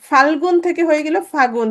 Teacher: ফাল্গুন থেকে হয়ে গেল ফাগুন, তাহলে ল লোপ পেলো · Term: অন্তর্হতি